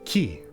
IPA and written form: ki (qui)